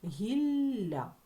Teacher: подовженим приголосним звуком це буде слово гілля в кінці Ми з чуємо м'який подовжений приголосний звук